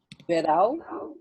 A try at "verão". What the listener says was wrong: Diphthong with the till on it, right? So then it becomes nasal. So it's not verão, it's verão. Verão, yes. It's upper, so it's verão. I like to open my mouth and try to sound it out my nose. So you want to sound it out your nose.